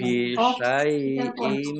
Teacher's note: Kasroh tanwin bertemu dengan huruf mim, bacaan idgham bihunnah. Idgham bihunnah masuk dengan mendengung, yaitu mendengung mim, ditandai mimnya ada tasdidnya, ditahan 2 harokat.